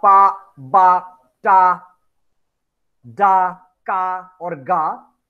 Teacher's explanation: we first stop the air. Suddenly, we let the air flow. So, like explosion happens with the air, and we stop the air to flow in the beginning. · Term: plosive or stop